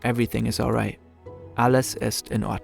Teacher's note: in German sometimes there's a mini pause before each individual word